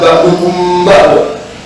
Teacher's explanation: pertemuan antara mim ketemu ba, yang mana dibacanya didengungkan tapi samar, ditahan ukuran 2 harokat. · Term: ikhfa sabawi